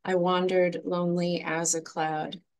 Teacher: basic patterns in poetry is the I am which is just one unstressed syllable followed by a stressed syllable